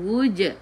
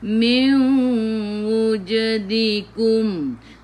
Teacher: Jim qalqalah. Sughra. Lantunannya kecil. Terus sambung.